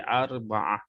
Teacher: Okay, contoh tadi fakhuz arba'ah. Kita baca ta ini bunyinya akan menjadi huruf ha.